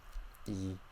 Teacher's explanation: E, very high in the mouth, very front, right? And then to show you English E, it's a little bit further back and lower. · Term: Vietnamese E